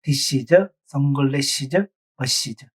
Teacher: 기본형에 ES가 붙은 경우에는 is라고 발음합니다.